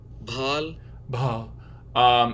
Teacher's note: he's truly voicing the closure phase of this stop, and then there's aspiration after it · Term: voiced aspirated stop